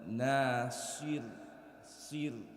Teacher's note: The ra, before it comes a kasra, so we're going to make the ra light. Nasir, sir, and I keep my tongue to the top of my mouth.